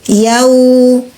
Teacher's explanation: wau sukun bunyinya u wau punya sifat rahwah alirkan Suara u